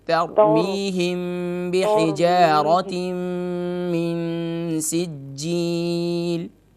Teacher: تا کو موٹا نہ کیجیے، را کو موٹا کیجیے